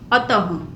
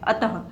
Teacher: विसर्ग की जगह पे हम किसका उच्चारण कर रहे हैं, ह व्यंजन का उच्चारण कर रहे हैं